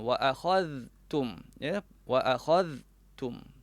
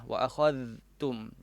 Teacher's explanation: Kemudian wa akhadhtum, kita sebut wa akhadhtum, zal, pastikan kita baca itu zal pada makhrajnya wa akhadhtum, ya, wa akhadhtum. Letakkan makhraj huruf zal, iaitu hujung lidah diletakkan di hujung gigi lah.